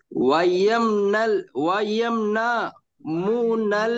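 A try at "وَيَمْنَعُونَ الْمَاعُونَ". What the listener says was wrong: আমার সাথে বলেন, মু এখানে নেই, এখানে মু নেই, আমার সাথে বলেন আপনি ওয়ায়ামনাউ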